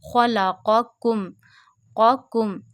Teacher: Make it differentiate clearly between qaf and kaf, because we read qaf with a thick voice, kaf in a thin voice.